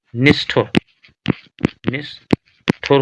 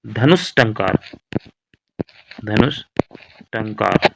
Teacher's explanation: विसर्ग के बाद टा या ठा, तो विसर्ग के स्थान पर मूर्धा सा का प्रयोग हो रहा है।